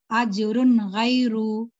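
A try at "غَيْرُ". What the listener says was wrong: गैन को मोटा बोलिए। गई को थोड़ा और जल्दी अदा करिए और फेलिन अदा हो जाता। अजरुन गैरु, गैरु, गई बोल रहे हैं ना आप, उसको थोड़ा मोटा करिए, गैरु।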